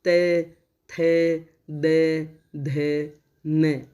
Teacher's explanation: त थ द ध बोलेंगे तो आप देखो आपकी जीभ दांतों को छू रही है, त थ द ध न, है ना। ये जीभ जो है आपके दांतों के बीच में आ रही है, तो ये दांतों से टकरा के निकल रही है। इनका उच्चारण करते समय जो ध्वनि है या जो सांस है वो दांतों से टकरा करके दांतों को छू करके निकल रही है, मतलब जीभ दांतों के बीच में आ रही है।